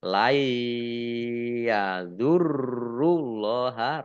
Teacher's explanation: Ada tasdidnya. Allahnya dibaca tebal karena harokat di depannya domah.